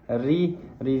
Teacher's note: ri di sini adalah ra tarqiq. Dibaca dengan nipis kerana berbaris kasrah.